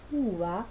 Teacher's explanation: en la palabra uva aparece el alófono fricativo, que es el que se suele dar en posición intervocálica